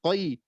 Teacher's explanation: Huruf ko ketika kasroh dibaca tafkhim nisbi